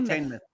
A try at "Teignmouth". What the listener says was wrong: Teignmouth, yeah, not mouth, myth.